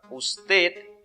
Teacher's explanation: usted es una palabra aguda su sílaba fuerte es la última